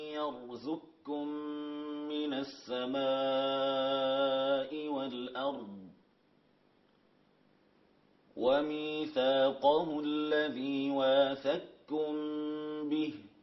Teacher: زك من الزاي إلى الكاف مباشرة · أدغم القاف في الكاف إدغاما كاملا، وهذا عند جمهور القراء أن القاف في الكاف تقرأ هنا بإدغام كامل، يعني تسقط القاف في الكاف ذاتا وصفة، لا يبقى للقاف أثر